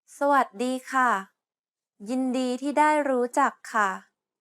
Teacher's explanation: The first syllable is a low tone, the third syllable is a mid-tone, the fourth syllable is a high tone, and the seventh tone is a falling tone.